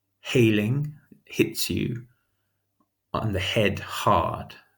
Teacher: the huffy her sound that linguists would call a voiceless glottal fricative